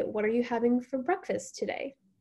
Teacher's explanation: so that today goes up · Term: up talk